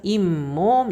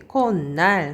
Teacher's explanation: 시옷의 대표 자음인 니은으로 소리가 나요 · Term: 사이시옷